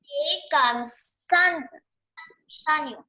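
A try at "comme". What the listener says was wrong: Not comes. Comes नहीं, कम. जैसे हम बोलते पानी कम है, पानी कम. तो कम बोलना है आपको, ठीक है? कम.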